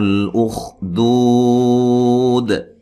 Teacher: قُتِلَ أَصْحَابُ الْأُخْدُودِ، صاد کو موٹا ادا کرنا ہے، حا مد اصلی ہے، بل لام کو ہلانا نہیں ہے، خا کو موٹا ادا کرنا لیکن ہلانا نہیں ہے